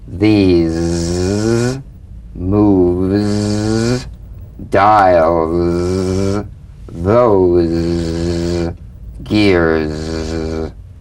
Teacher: So feel a smooth, strong vibration in the teeth and in the front of the tongue. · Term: Z sound